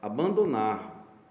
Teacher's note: tendo a tonicidade novamente na última sílaba, portanto, oxítona novamente